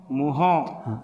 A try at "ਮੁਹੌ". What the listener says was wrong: ਨਾ ਫਿਰ ਮੂੰਹ ਹੋ ਗਿਆ ਨਾ ਜੀ, ਮੰਮੇ ਨੂੰ ਔਂਕੜ ਮੋਹ ਹਾ।